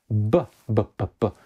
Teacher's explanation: And so that was going on in Greek, and the same thing was happening in the sequence M-P or M-P, so that the M could get weak, and then the P, voiceless, would come to be pronounced as B, B, B, B, with voice